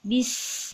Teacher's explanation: huruf Sin itu memang sifatnya berdesis jadi ada desisnya sedikit